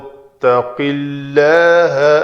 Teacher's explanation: اسم جلالہ کے لام سے پہلے کسرہ ہے، زیر ہے، تو اس لام کو پتلا پڑا جائے گا، قِلَّ کہ لو نہیں ہوگا۔